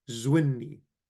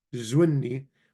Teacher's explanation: Something similar happens to roots that end in a nun except the vowel remains short and the noon is doubled in its pronunciation